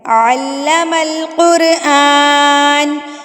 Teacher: الرحمن، الرحمن، علم القرآن، کھڑی زبر، کھڑی زبر، تو اس وجہ سے کھڑی زبر کو ہم جو ہے وہ ایک الف کے برابر کھینچتے ہیں، ایک الف کے برابر لمبا کرتے ہیں۔